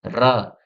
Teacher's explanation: जैसे उदाहरण समझिए र जैसे आप र का जब उच्चारण करते हैं तो ऐसा लग रहा है कि कंपन हो रहा है। · ऐसी ध्वनि जिसमें जीभ या अन्य अंग बहुत तेजी से कपकपाते हैं। जिससे कांपने की कंपन की आवाज आती है। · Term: प्रकंपित